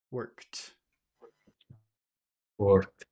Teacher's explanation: there's this very strong T at the end